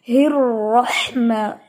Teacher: रॉ, इसको जितना आप हैवी लेके जाएंगी उतनी ही इसकी अदायगी दुरुस्त होगी